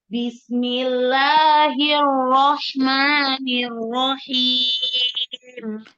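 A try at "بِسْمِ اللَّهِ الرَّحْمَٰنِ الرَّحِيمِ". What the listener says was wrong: Sempurnakan sifatul huruf sinnya ketika sukun. Apa tuh sin? Punya sifat apa aja? Hamas, roho, wasofir. Sempurnakan. Jadi jangan ngerem-ngerem, jangan bismillah jangan ya. Bismillah, sempurnakan ya, sukun-sukun sempurnakan.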